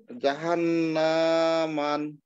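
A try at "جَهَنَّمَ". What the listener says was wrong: জাহান্না কিন্তু টান হবে না জাহান্নামা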